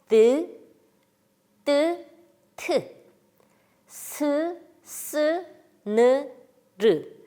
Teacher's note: 혀끝이 윗니 뒤에 도톰한 부분을 건드리면서 나는 소리들이 있습니다